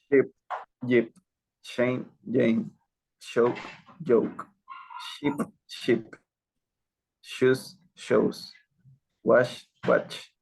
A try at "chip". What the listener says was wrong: We're having trouble with chew. So repeat.